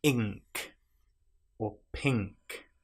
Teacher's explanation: our tongue is touching the roof of our mouth at the back rather than at the front. With N, it's touching our mouth at the front, the roof of our mouth, na. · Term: unique sound